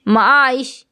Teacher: جو ش کی آواز ہے نا وہ تھوڑی دیر تک آ رہی ہے، معائش۔ لیکن اگر میں کہوں اب تو بات تو فوراً بند ہو گیا، یہ بالکل ڈبہ کی طرح بند ہو گیا، اب، جب، حد، اس طرح سے فوراً بند ہو گیا۔ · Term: رخو کے حروف